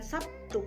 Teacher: Contoh asimilasi, kata Sabtu dalam bahasa Indonesia yang lazim diucapkan dengan Sabtu, di mana terlihat adanya perubahan bunyi B berubah menjadi bunyi T sebagai akibat dari pengaruh bunyi T. Perubahan ini merupakan jenis dari asimilasi fonemis.